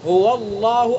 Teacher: اللہ کے لام کو پر پڑھیں گے چونکہ اللہ کے لام سے پہلے واو کے اوپر زبر ہے